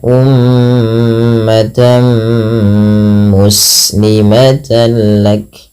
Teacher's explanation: Apabila ada tanwin bertemu dengan mim, maka tanwinnya dimasukkan ke huruf mim, tidak lagi terdengar bunyi ummatan muslimah, tapi diganti dengan huruf mim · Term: idgham bi ghunnah